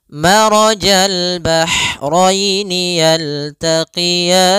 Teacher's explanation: Pada lafal maraja, ro-nya tebal disebabkan dia ro yang berharakat fathah.